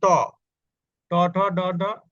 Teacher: উপরের মাড়ির গোড়ায় শক্ত অংশে অর্থাৎ মুর্দায় স্পর্শ করে উচ্চারিত হয় এজন্য এটার নাম দিয়েছে মূর্ধন্য ধ্বনি এই ট বর্গীয় ধ্বনির আরেক